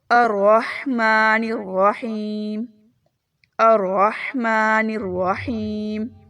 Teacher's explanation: ہا کی آواز حلق سے اچھے سے ادا کیجیے